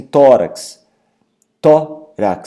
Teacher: a palavra tórax possui uma sílaba forte tônica em tó, ou seja, paroxítona